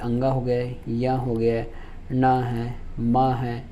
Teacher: तो ये आपकी अनुनासिक ध्वनि है। इनका होता है मुख एवं नासिक से, मुख एवं नासिक से इनका उच्चारण होता है।